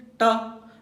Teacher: प स्पर्श हुआ, ट को लीजिए, ट, तो आपके मूर्धा में, ये मूर्धा में जीभ जो है पलट कर टच करता है।